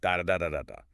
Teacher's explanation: It's a very steady, predictable staccato beat. You can practically set a metronome to every single syllable. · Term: syllable-timed